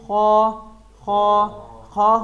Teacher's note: خا خا خا حروف مستعلیہ میں سے ہے، جس کو ہم ہیوی لیٹر بھی کہہ سکتے ہیں